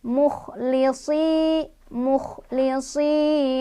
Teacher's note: Karena ada kasrah bertemu dengan ya sukun, dibaca panjang 2 harokat. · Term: mad tobi'i